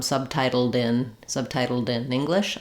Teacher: I'm going to let that D out as I link to a vowel